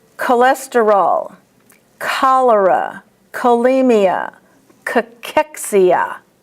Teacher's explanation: in medical words, the CH is pronounced as a K